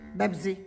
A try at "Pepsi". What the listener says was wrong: Mom, with a P, not a B.